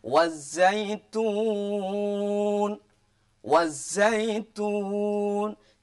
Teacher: Jadi alnya itu masuk di huruf za-nya, tidak boleh dibaca al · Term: idgham syamsiyah